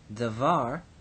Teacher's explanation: the accent is on the second syllable